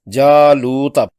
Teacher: دونوں مدوں کو 2 حرکات لمبا کرتے ہوئے جالوتا پڑھنا ہے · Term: مد اصلی